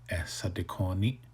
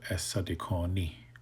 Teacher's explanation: change the glottal stop to a H